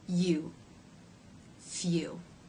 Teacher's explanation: You can see that though in the first sound the lips are rounded, in the second sound they are much more rounded and closed. · So the tongue goes from being raised in the front, touching the front part of the roof of the mouth, to pulling up and stretching towards the back of the roof of the mouth. The tip of the tongue still remains forward in the U as in boo vowel, U, here behind the bottom front teeth, or slightly lower in the soft tissue. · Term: U as in few diphthong